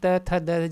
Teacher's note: जब आप बोल रहे हो तो एक तरीके से हम लोग का जो ये टीथ है मतलब दांत है वो एक तरीके से और जीभ से टच हो रहा है, तो उसी को दंत कहेंगे।